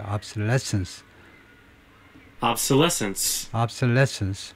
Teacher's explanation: 그래서 obsolescence, lessons 여기에 액센트가 있고